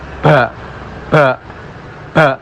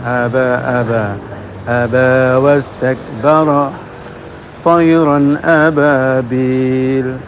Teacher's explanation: Nah ini justru akan menimbulkan ba itu melepaskan angin ya, akan menjadi hames. Padahal ba itu jahar, tidak ada angin yang lepas.